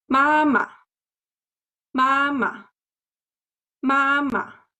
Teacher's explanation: Neutral tone sounds short and light, and also soft.